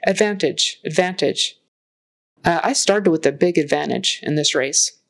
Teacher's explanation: Advantage. So make sure you get the V in there, that it's a really good V, voiced V.